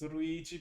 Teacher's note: they might pronounce it more as ruigi because they don't have the l sound